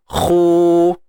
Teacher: khu tebal. Isti'ala, angkat pangkal lidah kita